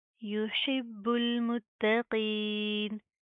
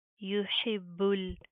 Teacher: با کے اوپر تشدید ہے، سختی سے مضبوطی سے جما کر پڑھیں گے، پھر اس با کو ہم اس لام کے ساتھ پلس کریں گے، ٹھیک ہے؟